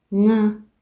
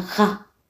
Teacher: Ng'a ni king'ong'o ukipenda iite sauti ya nazali. Ilali gha ni kikwamizo kiite kikwaruzo.